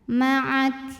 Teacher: jangan lupa keluarkan angin di huruf Kaf anginnya untuk Kaf yang sukun belakangan keluarnya